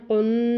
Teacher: اب نون پہ شد تھی اس لیے ہم یہ جو آواز کو کر رہے ہیں قن، یہ غنہ ہے